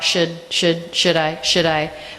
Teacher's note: The D is a flap sound because it comes between 2 vowels.